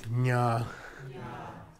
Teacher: And then the palatal nasal is nya.